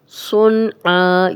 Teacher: صوت کو موٹا پڑھیں گے اور آگے نون ساکن آ گیا ہے اور آگے حروف حلقی میں سے عین ہے تو غنہ نہیں کریں گے